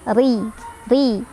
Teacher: ri-nya dibaca secara tarqiq karena ada ro berbaris di bawah atau kasroh. Jadi dibacanya tipis